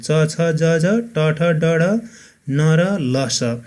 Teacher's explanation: त्यसै गरी अर्को दन्तमूल्य अथवा वत्स्य वर्ण, जिब्राको अघिल्लो भाग र माथिल्लो दाँतको पछिल्लो खस्रो भाग वत्स्यबाट उच्चारण हुने वर्णहरू